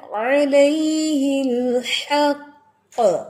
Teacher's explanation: میں نے حق کو جلدی نہیں پڑھا میں نے حق کے اوپر میں نے پاز کیا. کیوں؟ کیونکہ وہ 2 کاف ہیں. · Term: مشدد کاف